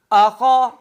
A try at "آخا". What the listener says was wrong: حمزہ کو موٹا نہیں کرنا، آ،